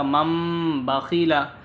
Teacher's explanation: ہجے مثلاً ممبخیلا، یہاں ممبخیلا، میم سے میم کو ملائیں گے اور یہاں غنہ بھی کریں گے اور اخفا بھی کریں گے، ناک میں بھی آواز لے جائیں گے اور تھوڑی دیر روکیں گے بھی